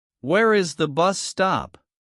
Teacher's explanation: Do you hear the rising tone at the end? This helps you know it is a question.